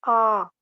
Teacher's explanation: और जबकि जब हम आ का उच्चारण करेंगे तो आ ऐसे उच्चारण करने में हमारा पूरा मुंह खुल जाता है। कोई बीच में रुकावट या बाधा पैदा नहीं होती। जीभ अपनी सामान्य स्थिति से ऊपर तो उठती है पर इतना ऊपर नहीं उठती कि वायु का रास्ता वह रोक सके।